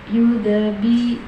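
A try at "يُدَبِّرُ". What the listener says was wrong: adanya ditekan. Ba-nya ditekan. Jadi dab biru gitu kan.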